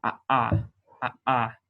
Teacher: I will be pronouncing this the same as we pronounce aleph. So it is a glottal stop. So ah. Some people will pronounce it as a voiced pharyngeal fricative, which is in the back of the throat, and it goes ah.